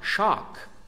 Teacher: eles falam o a mais aberto